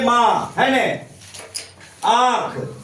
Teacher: अब यहां देखिए अनुनासिक ये जो चंद्रबिंदु है इसका जो स्वर ये ऐसे क्या है ये स्वर के बाद आता है ये भी समझ गए नहीं ऐसे स्वर जिसका उच्चारण देखिए चंद्रबिंदु का उच्चारण क्या होता है नाक और मुंह से होता है